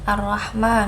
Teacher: dibaca matobi'i karena berharokat fathah panjang yang dibaca 2 harokat